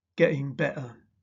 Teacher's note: glottal replacement of t between vowels is not generally accepted as RP.